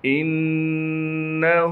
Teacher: سأرہقہ صعودا انہ، حمزہ کو نون سے ملائیں گے کیونکہ نون پر تشدید ہے، تشدید ہونے کی وجہ سے نون میں غنہ کیا جائے گا۔ ہا پر الٹا پیش ہونے کی وجہ سے ہا کو ایک الف کے مقدار کھینچیں گے۔